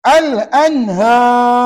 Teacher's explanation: Bukankah ra itu tebal? Sebab mengambil kira sebelumnya ada alif.